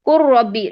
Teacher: لام ختم ہو گیا، بالکل ختم کر دیا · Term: ادغام تام